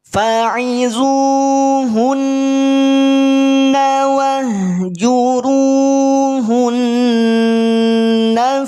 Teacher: Ketika berhenti di huruf nun bertasydid, maka tahan dulu 2 harokat. Jangan langsung dilepaskan. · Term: gunnah